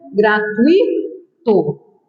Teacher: Gratuito. É um ditongo, não é um hiato